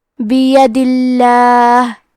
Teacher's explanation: تو ہمیں حرف اللام کو پتلی آواز میں پڑھنا ہے۔ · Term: ترقیق